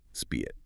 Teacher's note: It is a plosive sound, meaning a small burst of air literally must escape your lips to make the sound correctly.